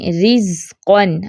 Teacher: जैसे देखें रिज़्क़न, अब रा के नीचे ज़ेर है तो ये रा बारीक पड़ी जाएगी